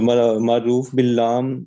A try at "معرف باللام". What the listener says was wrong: معرف، اس کو کہتے ہیں معرف، معروف نہیں، معرف باللام۔